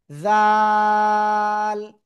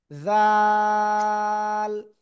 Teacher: জিহ্বার আগা উপরে 2 দাঁতের আগে লাগাবো, লাগিয়ে এটা নরম করে উচ্চারণ করব, আর 3 আলিফ টান হবে, জাল, ঠিক আছে, জাল।